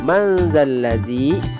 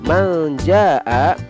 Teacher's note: ikhfa awsat berarti ikhfa yang pertengahan sengaunya. Bunyinya berada di antara ikhfa abad dan ikhfa akrab.